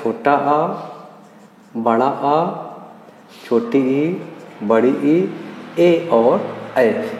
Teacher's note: जिनको बोलने में हमारा मुख गोल ना हो उसको आवृतमुखी बोलते हैं